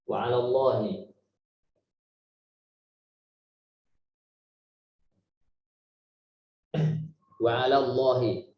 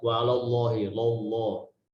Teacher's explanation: Nah, di sini penekanannya adalah lam yang pertama, la. Bukan Allahnya, tapi alanya. Nah, di sini biasanya ikut tebal wa 'alallahi, lallah.